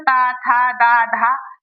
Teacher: तो यह दांतों के स्पर्श से बोले जाते हैं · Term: त वर्ग